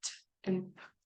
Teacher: the breath stream, the air stream stops and then kind of explodes out of your mouth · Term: plosive sounds